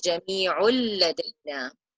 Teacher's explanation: Instead of saying jami'un, we drop that noon and it becomes jami'ul ladayna, holding the sound for 2 counts.